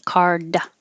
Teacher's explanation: card so you don't have to release the d card but my tongue is curled back for the r card and you just push your whole mouth up and the